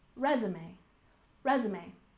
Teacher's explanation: And next we have resume. We stress the first syllable, resume, resume.